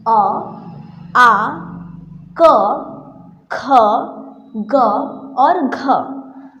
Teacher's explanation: अ बोलते वक्त यह हमारे कंठ से आवाज़ आ रही है, कंठ से ध्वनि निकल रही है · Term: कंठस्य